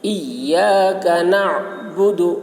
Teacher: نعبد میں عین کو حلق سے ادا کریں گے